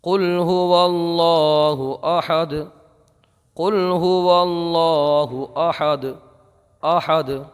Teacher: تو ہم یہاں پر قلقلہ کریں گے، یعنی آواز پلٹتی ہوئی نکلے گی۔